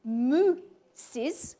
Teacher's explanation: the E in the is ending caused this oo to be fronted, to move to the front of the mouth, to move to the same approximate position where the e was said.